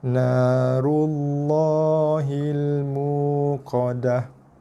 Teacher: Lam tebal, kemudian 2 harakat pada lafaz nama Allah.